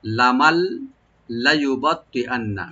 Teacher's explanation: এটা যে নুন সাকিন আছে, নুন সাকিন পরে যে লামটা আসছে, এটা লামের সাথে এদগাম হয়ে বা মিলে বা সংযোগ হয়ে পড়া হবে, কিন্তু এখানে গুন্না হবে না, শুধু নুনটা লামের সাথে মিলে, এখানে নুনের উচ্চারণ থাকবে না, শুধু লাম উচ্চারণ হবে।